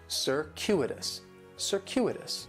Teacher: In the first syllable, that C is going to have more of an S sound, circuitous. The stress is going to be on that second syllable, and that CU it's kind of like you're saying the letter Q, circuitous.